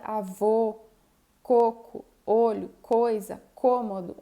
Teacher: E o O fechado, com a boca semi-fechada